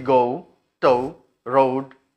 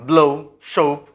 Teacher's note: ओ sound से ऊ sound तक ग्लाइड है उसका